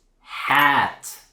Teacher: It's a blend of an ah and an eh. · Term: open vowel